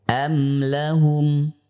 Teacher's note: huruf mim termasuk huruf yang tidak melibatkan nafas, atau kita sebut dengan huruf yang jahr. Kita lihat ya ketika kita mengucapkan huruf mim, misalkan am lahum, tidak ada nafas yang kita hentakkan pada saat mengucapkan am lahum.